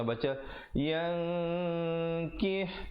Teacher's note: Yang nun mati bertemu kaf, ikhfa hakiki, asalnya yankihna, jadi di situ kena baca yang kih, kaf bari bawah bunyi ki bertemu ha jadi kih, ya, ha pedas.